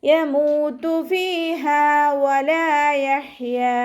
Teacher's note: വാവ് ഉച്ചരിക്കുമ്പോൾ ചുണ്ടുകളൊന്ന് വട്ടത്തിൽ പിടിച്ചിട്ട് ഉച്ചരിക്കുക